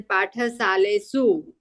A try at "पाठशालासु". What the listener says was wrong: सालेसु नहीं होता है, पाठशालासु।